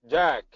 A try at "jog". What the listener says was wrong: Okay, a little bit more drop of the jaw for jog. Jog.